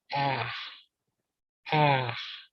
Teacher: It's a faint sound when you're saying it quickly in English. But if you say it slowly, ah, ah, it ends with a KH type of sound.